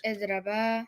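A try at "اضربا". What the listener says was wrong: No, you change the ri to the ra. Idriba.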